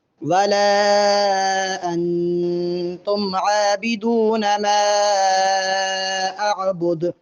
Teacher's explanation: دال کو وقف میں ساکن کریں گے، اس لیے دال پہ قلقلہ بھی ہوگا